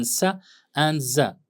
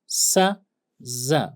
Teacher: S, z, both are fricative sounds, alveolar sounds, but s is voiceless, z is voiced. Okay, and you can see when there's vibration, this is voiced.